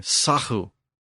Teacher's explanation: that G sound shifted to this Germanic breathy consonant in the back of the throat, and it became sahu.